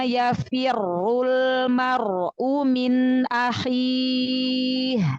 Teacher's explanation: ro-nya dhammah, berarti dibaca tebal ya. Maka udah firnya itu udah angkat lidahnya, udah ro-nya itu sudah tebalkan.